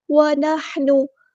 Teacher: ہا کو مستحلق سے ادا کرنا ہے، مڈل تھروٹ سے ادا کرنا ہے